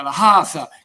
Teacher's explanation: alla gorgia toscana no la c aspirata